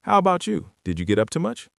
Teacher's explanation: Your voice needs to rise at the very end of the sentence on the word much. That rising pitch is the signal to the other person that it is officially their turn to speak.